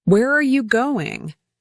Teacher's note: Rise on where and fall on going. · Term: falling intonation